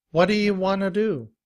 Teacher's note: We combine what and do to make wa. You becomes y. Want to becomes wanna.